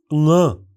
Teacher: इस ध्वनि के उच्चारण में जीभ का पिछला भाग मुलायम तालु की ओर उठता है। हवा नाक और मुंह दोनों से बिना किसी अवरोध से निकलती है।